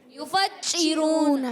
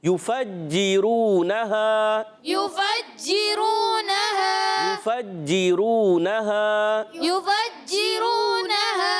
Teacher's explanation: ہیں ان کو کھینچنا نہیں ہے، حرکات کو نہیں کھینچتے، مگر جیم مشدد ذرا رک کر ادا کریں گے